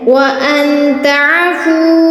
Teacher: نون ساکن اس لیے یہاں پر اخفا کریں گے اور بڑی مد آئی ہے اس لیے یہاں اس کو 6 الف کے برابر کھینچنا ہے